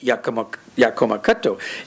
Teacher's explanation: I get not only the loss of the high tones, but I also get shortening